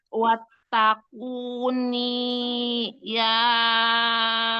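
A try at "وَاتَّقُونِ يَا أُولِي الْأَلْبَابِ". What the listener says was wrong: Ini-nya nggak panjang. Ini-nya kan nggak panjang ya.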